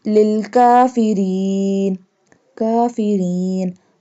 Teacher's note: This one kaf pronounced by touching the tongue to hard part of palate.